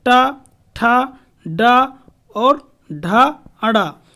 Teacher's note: टा, ठा, डा और ढा, अड़ा, इन सब का उच्चारण स्थान मूर्धा हो जाता है।